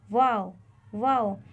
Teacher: वाव को अदा करते वक्त दोनों होठों को गोल किया जाएगा जब हम वाव को अदा करेंगे तो होठ को ऐसे गोल